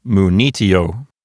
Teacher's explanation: So there's nothing making that penult into a long syllable. So the accent goes to the antepenult, which is N-I. So this word sounds like munitio.